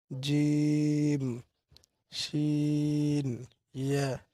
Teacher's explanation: তো ছয় নং মাখরাজ। জিহ্বার মধ্যকান তার বরাবর উপরের তালুর সঙ্গে লাগাইয়া তিনটি হরফ উচ্চারিত হয়